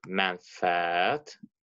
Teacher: mənfəət sözündə biz bilirik ki, tələffüz zamanı ənin biri düşəcək, digər ə isə uzun tələffüz olunacaq.